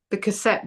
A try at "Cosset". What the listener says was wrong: You keep saying, it sounds like you're saying cassette. Cossette. You can when you say, people are going to start looking for cassette, and it's Cossette.